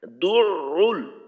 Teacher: যখন আইনে যাব প্রথমবার দু ঠোঁটটাকে একটু খোলা, তারপর আইনের পেশ উচ্চারণ করার জন্য আবার গোল করা দু রুল। তো এখানে ঠোঁটটাকে দুইবার গোল করা, দালের পেশের জন্য একবার, আইনের পেশের জন্য আর একবার, মাঝে দিয়ে একটু খোলার চেষ্টা করা